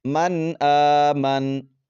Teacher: نون کو خوب ظاہر کریں گے، غنہ نہیں کریں گے، آواز کو ناک میں نہیں چھپائیں گے۔ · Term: اظہار حلقی